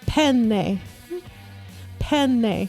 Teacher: because there's two of the same consonant, so it's a long consonant.